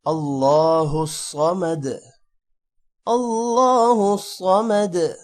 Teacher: صاد بھی موٹا ہوگا اور دال پر قلقلہ ہوگا